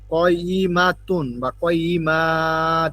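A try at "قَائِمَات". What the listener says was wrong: না না, এখানে টানবেন কেন? না, টানা হবে না। হুম, কয়িমা হবে।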